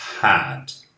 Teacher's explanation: Não é um som de E, simplesmente. É um som de A junto com o som de E, lá no fundo da garganta.